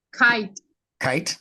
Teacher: kahili or whatever that same case sound is going to be coming from the throat more towards the back of the throat you can feel it if you touch